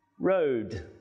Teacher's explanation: the vowel sound o in the word road is a bit longer